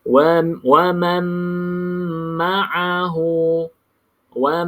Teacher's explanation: dua harakat caranya masuk juga ke dalam huruf mim seterusnyaalah Wam pastikan kalau masuk dalam mim bibir atas bibir bawah rapat betul-betul tak boleh ada bukaan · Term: dengung dua harakat